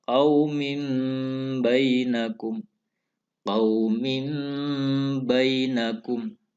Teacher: Karena ada tanwin bertemu dengan ba. Cara bacanya, suara tanwin masuk, seakan-akan masuk ke ba. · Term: bacaan iqlab